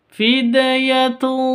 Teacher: tanwin bertemu dengan tho cara bacanya samar didengungkan siap-siap ke huruf thnya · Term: ikhfa Hakiki